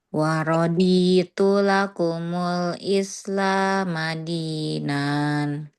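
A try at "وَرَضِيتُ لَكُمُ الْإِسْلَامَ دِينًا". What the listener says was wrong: tapi dinan. Dinan. Nannya nggak dipanjangin, Bun. Dinan. Tinggal dirapikan lagi aja, Bun, apa yang panjang 2 harokatnya.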